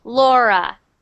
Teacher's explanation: That R sound, just make sure it's not rolling.